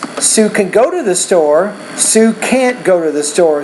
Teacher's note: So when can is positive, we want to put more stress on the main verb and not as much stress on that word. But when can is negative, you have to stress both the auxiliary and the main verb